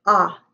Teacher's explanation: i hear ah in the middle and that's short o